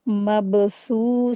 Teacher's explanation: ब के ऊपर सुकून लगा है। तो कलकला करके रीडिंग करेंगे इसको।